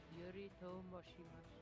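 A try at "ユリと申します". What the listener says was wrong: Moshimasu. So yeah, I noticed when it's combined ash and the s sound, that's a bit difficult for you.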